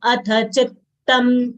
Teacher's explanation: chi is a short sound followed by 1.5 ths. Both ths should be distinctly heard. It is a natural aghat, so it will come out as chittam and not chitam.